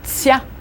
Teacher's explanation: For tsya, the tongue is kind of closer to the roof of your mouth, very intense.